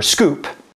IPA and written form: skʷup (scoop)